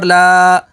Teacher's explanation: لام کھڑا زبر لا، نار اللہ، لام کے اوپر کھڑی حرکات ہے تو کھڑی حرکات کو حروف مدہ کی طرح لمبا کر کے پڑھیں گے